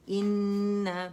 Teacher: The most complete longest गुन्ना है, ठीक है। 2 काउंट देंगे इसे, लेकिन 2.5-3 तक आवाज़ चली जाएगी, शो करेंगे आवाज़ से, ठीक है।